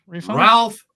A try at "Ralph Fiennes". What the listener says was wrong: He goes by Rafe in the UK. That was not pronounced. And he says Rafe.